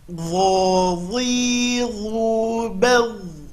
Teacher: Huruf dho sama makhraj dengan huruf dha, keluarkan ujung lidah, tapi ini huruf tebal, ya, huruf tebal.